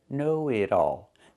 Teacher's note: The T changes to a fast D because it's between vowels.